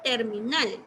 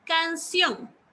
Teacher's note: todas tienen la sílaba tónica en la última posición. Por lo tanto, son palabras agudas.